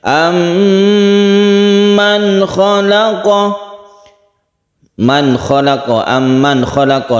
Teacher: Membacanya yaitu didengungkan atau dipanjangkan ketika tasydid mim. Ditahan ketika kita mentasydidkan mim. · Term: gunnah musyaddadah